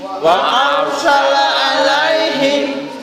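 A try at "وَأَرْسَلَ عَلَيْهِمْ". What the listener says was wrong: Ini tidak wa'ar. Wa arsala tidak wa arsala. Nek wa'ar niku tipis. Nah ini ditebal.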